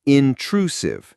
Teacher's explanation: The stress is on the second syllable, intrusive. The last part, sieve, has a soft S sound, like the S in vision.